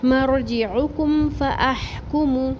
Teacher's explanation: یہاں میم ساکن پر رکیں گے نہیں، اظہار شفی کریں گے